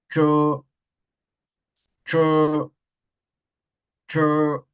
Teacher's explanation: Si suena como una T mientras decimos la palabra, está correcto, porque es corto, es fuerte y sin mucha liberación de aire. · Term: ZH